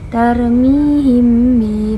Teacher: mim mati bertemu dengan ba berarti ikhfa syafawi